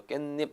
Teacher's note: 니은 때문에 디귿이 니은으로 바뀌고요.